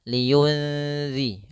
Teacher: tidak dimasukkan tapi disamarkan nunnya kepada huruf setelahnya maka di sini nunnya disamarkan ke Zal liyunzi langsung kepada makhraj · langsung kepada makhraj huruf dalal yaitu pada ujung lidah menempel dengan gusi atas kemudian ditahan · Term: ikhfa, Ikhfa